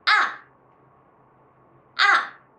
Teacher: it starts at the top then fall sharp and strung to the bottom like ah ah so let's take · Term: falling tone, fourth tone